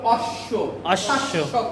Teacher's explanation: যদি শব্দের মাঝখানে বা শেষে বফলা আসে তাহলে ওই বফলার উচ্চারণ কি হবে? দ্বিত্ব হবে।